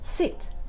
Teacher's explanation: It goes from high pitch to a low pitch, like a dropping line. Your voice is strong as the tone drops.